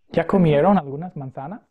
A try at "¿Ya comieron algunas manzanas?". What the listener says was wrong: Magnífico.